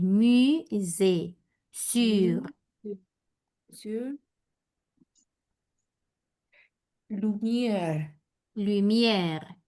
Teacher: teníamos el fonema que es pongo boca de U, pero pronuncio una I